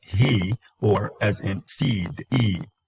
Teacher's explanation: The tongue is front and it is high. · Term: high and then front vowel